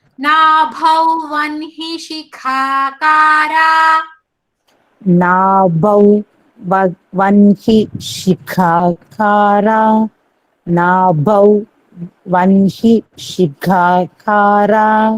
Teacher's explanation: First Kha is Mahaprana. Second Ka is Alpa Prana.